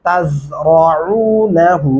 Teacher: आइन गले से अदा होते हुए वाव के साथ लंबा भी होगा